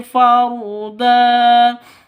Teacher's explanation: Farda da panjang dua ketukan mad iwad